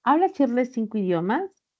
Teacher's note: En cambio, si lo coloco como una pregunta, ¿habla Shirley 5 idiomas? Sería ascendente.